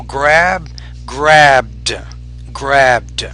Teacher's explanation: And with the D after a voice consonant, for example, grab, grabbed, grabbed. You have to make sure you pronounce that as a D, not a T. So pronounce it with a little more D, grabbed.